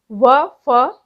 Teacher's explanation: ऊपरी दांत व निचले होठों से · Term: दं तोष